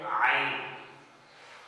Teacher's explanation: आइन भी जो है हम हलक के शुरू से ही अदा करेंगे